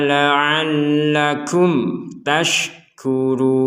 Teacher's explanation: Di sini ada pertemuan mim sukun dengan ta. Kami membacanya dengan jelas.